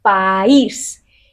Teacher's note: vocal A fuerte y vocal I débil. La I recibe la fuerza